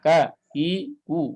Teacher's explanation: Dia ada hamasnya tapi hamas paling dhaif, hamas paling lemah. Tidak perlu dibuat-buat. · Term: huruf kaf